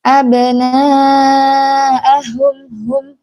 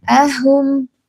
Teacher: Hum ini tipis jangan dibaca tebal.